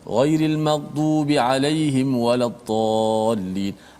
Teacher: 2 huruf ni, huruf waw dan fa. Bila mim mati bertemu dengan huruf waw dan fa, kena hati-hati sikit supaya mim tu tak bunyi ikhfa, dia bunyi izhar, jelas mati. Contoh dalam Fatihah ada mim mati bertemu dengan waw.